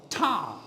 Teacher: When I say ta, I raise my, I raise the tip of my tongue, and it touches the teeth ridge.